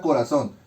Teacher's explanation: Por lo tanto, son es la sílaba tónica de la palabra corazón. Ra y co van a funcionar como sílabas átonas.